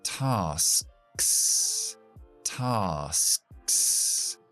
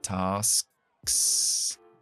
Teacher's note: Frenamos atrás con la K. Tasks. Y soltamos con la S.